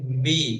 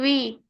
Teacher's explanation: ওয়াউসের বি যখন উচ্চারণ করব তখন ঠোঁট একে অপরের সাথে মিলবে না। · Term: ওয়াউসের ভি